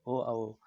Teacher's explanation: कंठ ओष्ठ, तो कंठ और ओष्ठ दोनों से होता है